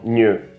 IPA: ɲɲ